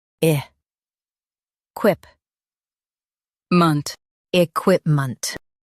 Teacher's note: Stress quip and soften ment.